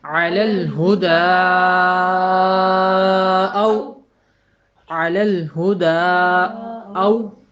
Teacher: عین کے اوپر آدھی آواز ہے، لام کے اوپر آدھی آواز ہے، اور الف آگے والا جو ہے وہ اس کے اوپر کوئی حرکت نہیں ہے۔ اگلا لام پچھلے لام کے ساتھ مل رہا ہے جزم کی وجہ سے